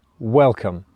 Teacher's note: you stress the first syllable